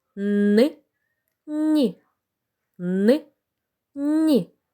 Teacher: при вимові звука н язичок за верхніми зубами при вимові звука нь язичок за нижніми зубами